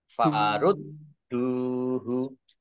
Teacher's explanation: Biar tampak dobel maka ditekan. Farud duhu dal domah wawu sukun matobi'i panjang dua harokat